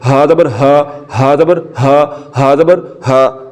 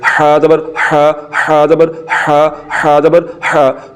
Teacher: ہا کو ہم نے حلق کے نیچے والے حصے سے پڑھنا ہے.